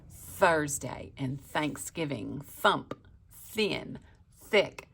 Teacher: when you make that soft TH sound, your voice turns off. You don't feel the vibration of your voice box.